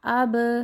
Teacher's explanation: कलकला के हरूफ के ऊपर जब सुकून की अलामत आ जाती है तो हम उसको हिलाते हैं। इसलिए जोड़ करते हुए भी हम पढ़ेंगे हमज़ा ज़बर बा, अब।